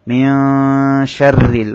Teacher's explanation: রর মধ্যে জের হওয়ার কারণে রটা বারিক হবে।